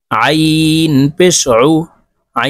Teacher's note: আইন পেশ উইন হরফ হলকের মধ্যখান থেকে চাপ দিয়ে উচ্চারণ করতে হবে